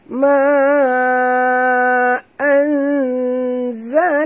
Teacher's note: nun mati bertemu zai, kita kena sorokkan bunyi nun ini ke dalam zai disertai dengan dengung ikhfa hakiki